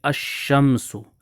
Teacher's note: اور دونوں کا آپس میں ادغام کر دیں گے۔ بالفاظ دیگر اس صورت میں لام کا تلفظ نہیں ہوگا بلکہ بعد والا جو حرف شمسی ہے اس کو مشدد پڑھا جائے گا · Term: لام کا ادغام